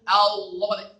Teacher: dia tafkhim namun tetap istifal dan infitah. · Lam itu hanya tafkhim, tapi tetap infitah